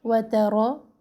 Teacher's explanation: را کو موٹا پڑھنا ہے، را کے پر زبر ہے